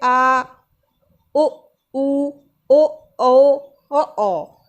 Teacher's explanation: पश्च स्वर में क्या होता है, जीभ का जो पीछे वाला भाग है वह सक्रिय रहता है,